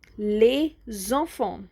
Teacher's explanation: Now there is a liaison here. We get the Z sound because the first word les is ending in S and the second word enfant is beginning in the vowel. So that's why we are going to form a liaison which will produce a Z sound, a Z sound.